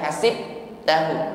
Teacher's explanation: ba sukun nampak sifat Qalqalah Maka pantulkan jangan ditahan